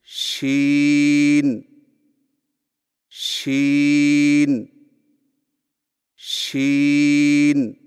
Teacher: شین کی ادائیگی میں زبان کے درمیان کو تالو کی طرف بلند کرتے ہوئے باریک اور پھیلتی ہوئی آواز میں پڑھیں، یعنی شین شین شین۔